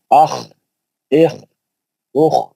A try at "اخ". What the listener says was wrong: جلدی نہیں، بھاگنا نہیں. لمبا لمبا لمبا پڑھنا.